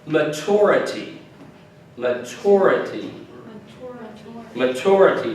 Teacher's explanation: The emphasis is on the T-U-R. Sometimes in the United States we will pronounce it maturity.